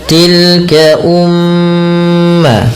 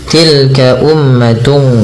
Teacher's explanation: Pada lafal mim yang berharakat tasydid, ini cara bacanya kita perlu menahan bunyi suara nya sepanjang 2 harokat, teman. Karena pada lafal ini terdapat bacaan gunnah, yaitu dengan menahan bunyi suaranya dan memasukkan kerongga hidung.